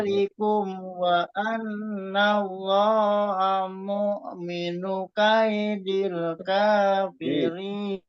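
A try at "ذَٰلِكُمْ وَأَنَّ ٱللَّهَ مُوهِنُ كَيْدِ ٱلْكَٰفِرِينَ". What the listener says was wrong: Ini enggak mukminu tapi muhinu kaidil kafirin. Coba muhinu bukan mukmin.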